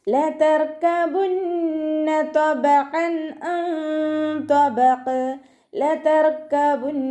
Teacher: റ അൽക്കലയുടെ ലെറ്റർ അല്ലാത്തത് കൊണ്ട് ഹാഫ് സുക്കൂന് കൊടുക്കാൻ ശ്രദ്ധിക്കുക.